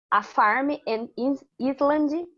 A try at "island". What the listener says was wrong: An island. An island. Yes, we say island. We don't pronounce the S, okay? An island.